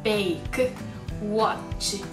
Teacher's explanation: ちっちゃい母音がついていることによって有声音で終わってしまっています